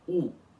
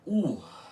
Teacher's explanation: ela é pronunciada com uma leve aspiração final, ou seja, a pronúncia dessa letra é assim: ur, uma vogal aspirada. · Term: U aspirado